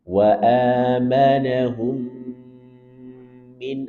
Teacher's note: Kemudian di sini ada mim sukun bertemu dengan mim. Idgham mimi atau idgham mutamatilain. Tahan 2 sampai 3 harakat.